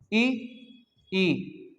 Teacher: कंठ के बाद हमारे तालु, तालु से जीभ लगेगी ई बोलते समय